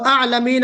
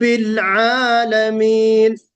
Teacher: پہلے آپ نے گویا کہ حمزہ نکالا، جس کو آپ اردو میں الف کہتے ہیں، تو یہاں پہ حمزہ نہیں ہے بلکہ عین ہے۔